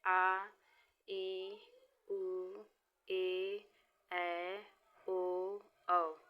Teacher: जिन स्वरों के उच्चारण में दो मात्राओं या एक मात्रा से अधिक का समय लगता है उन्हें दीर्घ स्वर कहते हैं, जैसे आ, ई, उ, ए, ऐ, ओ, औ।